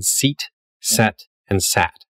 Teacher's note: your tongue starts up high e and then it goes to the middle of your mouth and then goes down to ah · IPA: [sit] [sɛt] [sæt]